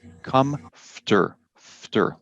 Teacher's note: There's no vowel sound between the F and the T.